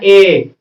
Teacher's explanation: कंठ और तालु दोनों पर जोर पड़ता है, तो ए दैतो कंठ तालु मतलब ए का उच्चारण स्थान कंठ तालु होता है।